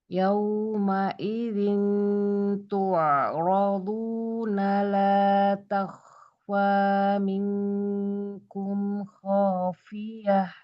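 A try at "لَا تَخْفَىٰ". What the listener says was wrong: Takhfa. Jangan ikut bibir atasnya. Ketemu atas, dorong nafas banyak. Karena kalau fa itu memang banyak yang membacanya itu bibir atasnya ikutan, walaupun dia meletakkan bibir bawah. Bagian dalamnya itu ke gigi seri atas.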